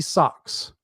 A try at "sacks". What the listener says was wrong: You said socks instead of sacks.